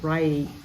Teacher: this is the long i in English right not e like in Indonesia